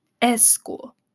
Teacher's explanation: Spanish speakers often insert a vowel before a cluster. So school might sound more like s school because of that vowel that they put at the beginning of the word.